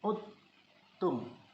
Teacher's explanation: Dal tidak dilafazkan, malah bunyi dal dimasukkan ke dalam ta. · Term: idgham mutaqaribain